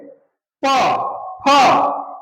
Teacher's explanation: प एक होठ जो है दोनों होठ एक दूसरे से जब तक स्पर्श नहीं करेगा। दोनों होठ एक दूसरे से स्पर्श नहीं करेगा तब तक तुम प नहीं बोल पाओगे। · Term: ओष्ठ